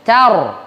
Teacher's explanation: Kalau tarmihim tarkik jadinya, itu keliru. Mestinya tar, bibirnya maju tuh, itu namanya tafkhim. Jadi kalau sebelumnya a, sebelumnya u, tafkhim, tebal, bibirnya maju.